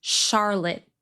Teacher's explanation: The vowel in the second syllable is reduced to schwa with a stopped T at the end